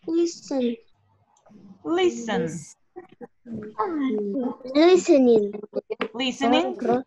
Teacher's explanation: Посмотрите, это слово длинное из двух слогов. И, кстати, ударение будет на первом слоге.